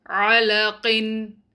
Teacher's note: Make sure your عَيْن is not a hamza.